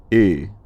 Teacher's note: scholars tend to have it as Ö, a rounded front mid-height vowel